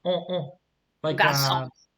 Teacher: Garçon. But notice here I don't pronounce the N. Okay, Garçon. it's a nasal. It's like on. I pronounce through my nose.